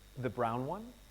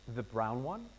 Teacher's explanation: Rising intonation for clarification. To ask for clarification or more information, we use rising intonation.